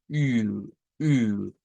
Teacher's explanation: La I redonda significa que es hacer la misma I que conocemos, pero con nuestros labios en forma de un círculo